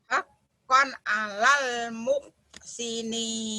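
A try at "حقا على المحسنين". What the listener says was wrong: Bagus. Mohnya ketinggalan. Moh.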